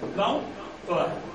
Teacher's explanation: Con un saltillo de pura suspensión